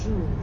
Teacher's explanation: the R at the end of jour doesn't really sound like an English R. You should feel that R in your throat. Jour. Yeah, almost like you're gargling or clearing your throat.